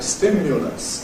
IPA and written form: ˈstɪmjʊləs (stimulus)